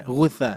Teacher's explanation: Tapi gutsa tsa ujung lidah ya.